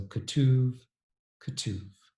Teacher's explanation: two u-vowels changed into a schwa or a muttered vowel, followed by u vowel